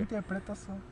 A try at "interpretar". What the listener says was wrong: Não. Interpretação você falou. Fala interpretar.